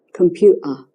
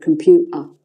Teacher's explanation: the T is not pronounced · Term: glottal stop